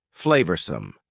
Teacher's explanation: Notice the pronunciation. 2 schwa sounds there.